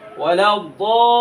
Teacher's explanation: দল 4 আলিফ টান দিয়ে মানে আওয়াজকে লম্বা করে দিয়ে লামকে ধরবেন